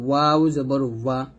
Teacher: নুন জবর না, নুন জের নি, নুন পেশ নু, না নি নু, এটা হবে নুন দুই জবর নান, নুন দুই জের নিন, নুন দুই পেশ নুন, নান নিন নুন, এরকম। ওয়াও, দুই ঠোঁট গোল করিয়া মুখ খোলা রেখে উচ্চারণ করতে হবে